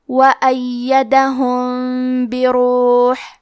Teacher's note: اخفاء کا معنی ہے چھپا دینا، تو ہم میم ساکن کو چھپاتے ہوئے اور غنہ کے ساتھ یہ حکم کو ادا کریں گے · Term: الاخفاء الشفوی